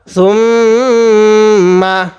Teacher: গুণনা করব নাকের বাসি দ্বারা। ইয়া হা পেশ ইউ, এটা হা, এই হাটা উচ্চারণের সময় একটু হালকা বাতাস বের করব।